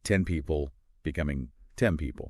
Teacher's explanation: When you say 10, your tongue is touching just behind your teeth for that N sound. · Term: assimilation